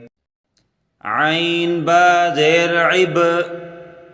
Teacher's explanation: عین کو گلے سے نکال کے پڑھیں اور با پر قلقلہ کریں۔